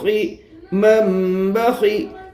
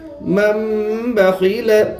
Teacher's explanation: خا کے نیچے زیر ہے، زیر کو جلدی پڑھے، تھوڑا بھی نہ کھینچے، معروف پڑھے، مجھول آواز سے بچے۔